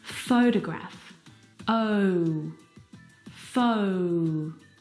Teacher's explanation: The second syllable is unstressed, and it is reduced down to the schwa sound.